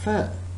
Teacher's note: are working for example when i say one lip that means i am touching upper teeth on the lower lip when i'm producing the sound fur